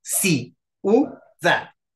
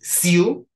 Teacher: vean cómo la i y la u se pegan en una sola sílaba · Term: diptongos